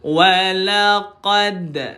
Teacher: Qalqalah sughra pembawaan dia lantunan tetapi dipanggil ringan.